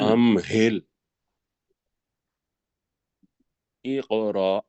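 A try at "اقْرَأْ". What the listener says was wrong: اقرا، یہ کاف کے اوپر کلکلا کرنا ہے نا جی، اقرا، نہیں را نہیں،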